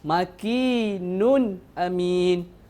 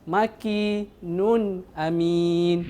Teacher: Tanwin itu perlu dibaca dengan jelas dan tidak dengung. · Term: dibaca jelas